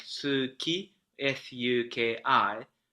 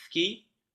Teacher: with the initial u not really pronounced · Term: devoiced vowels